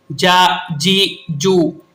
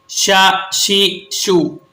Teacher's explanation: वस्ते जुबान और वस्ते तालु। यहां से 3 हुरूफ अदा होते हैं, जीम, शीन और या। इसीलिए इन्हें हुरूफ शजरिया कहते हैं।